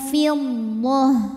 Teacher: ta marbutah harakatnya apapun berhenti jadi H